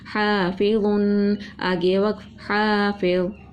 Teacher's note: جہاں پر الف مدہ تھا ایک الف کے برابر پڑھا، زیر تھی نرمی سے پڑھا، تنوین تھا غنہ کر کے پڑھا